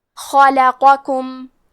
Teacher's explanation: کلمت خلقکم میں حرف الخاء کی ادائیگی حلق کے اوپر والے حصے سے ہے. خا حروف تفخیم میں سے ہے تو ہم یہ حرف کو موٹی آواز میں پڑھیں گے. · لام حروف ترقیق میں سے ہے تو ہمیں لام کو پتلی آواز میں پڑھنا ہے · پھر حرف القاف ہے، قاف حروف تفخیم میں سے ہے تو ہم قاف کو موٹی آواز میں پڑھیں گے